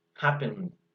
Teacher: Pongo la mano en la garganta y pronuncio la N. Vibra un montón. Entonces, cuando vibra un montón, la ED simplemente suena como la D de dedo.